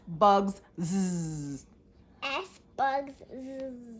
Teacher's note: S makes that Z sound sometimes at the end of a word